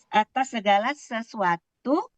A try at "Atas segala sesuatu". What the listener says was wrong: Intonasinya kurang yang akhir. Coba diulang.